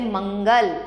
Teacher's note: अनुस्वार का उच्चारण म तथा न के समान होता है तथा नाक से होता है